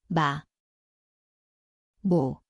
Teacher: 미음, Zvuči kao M. Mjesto su oba usna, nazalno.